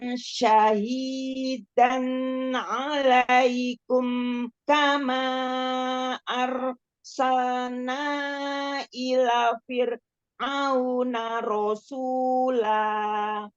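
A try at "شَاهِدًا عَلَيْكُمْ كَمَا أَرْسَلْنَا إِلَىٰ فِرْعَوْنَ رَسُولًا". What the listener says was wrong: Banyak matobi yang terlewat tuh. Shinnya fathah, setelahnya alif. Ada matobi'i.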